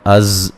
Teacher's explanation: زا کو زور سے سیٹی سے ادا کریں گے، ہلانا نہیں ہے